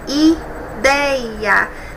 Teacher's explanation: Nós temos uma palavra paroxítona, é a penúltima sílaba que é a mais forte.